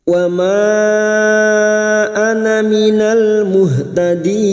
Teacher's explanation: din bertemu mat dengan huruf hidup yang dibaca waqaf mat arid li sukun, 4 harokat kita panjangkan